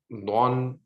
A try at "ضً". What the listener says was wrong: Don. Make it more heavy if you can. Don.